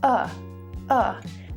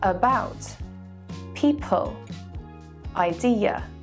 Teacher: this is called a schwa and is very common especially in british english